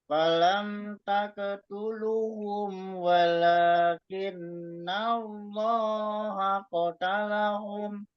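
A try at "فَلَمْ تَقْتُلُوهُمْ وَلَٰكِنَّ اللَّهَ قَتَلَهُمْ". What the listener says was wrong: Lu-nya, Lu-nya kecepatan, lu-nya matobi'i. Cuman di itu aja masih banyak beberapa ada tempat yang ditambah gitu dan hilang.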